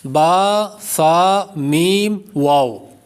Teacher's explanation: ہونٹوں سے 4 حروف ادا ہوتے ہیں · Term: حروف شفویہ